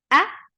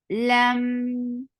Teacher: We will get sifa of tawassut, and tawassut is a medium flow of sound.